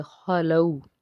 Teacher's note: خا جو ہے حرف مستعلیہ کا حرف ہے اس لیے اس کو پر پڑھیں گے ، لام واو زبر لو، واو لین کا قاعدہ ہے، خلو،